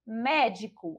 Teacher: a gente já identifica que a sílaba tônica é a sílaba mé. Então, a gente já sabe que não é a última sílaba, então médico não é oxítona.